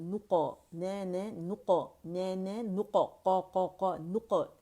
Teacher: اور قاف کا قلقلہ موٹا ہوگا